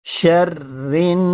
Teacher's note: شرری، را کے نیچے زیر ہے اس لیے باریک پڑھیں گے، شرری، شغوی نہیں، شرری، شرن، نون کے اوپر تشدید ہے، نون یا میم پہ تشدید ہو تو غنہ ہوتا ہے۔